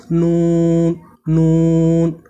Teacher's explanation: জিহ্বার আগা তার বরাবর উপরের তালুর সঙ্গে লাগিয়ে নাকি সুরে নুনকে পড়তে হয়, যেমন নুন নুন।